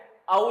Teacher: तो कंठ प्लस ओष्ठ, कंठोष्ठ ध्वनि हमारी कौन सी है? औ जो है हमारी ये कंठोष्ठ ध्वनि है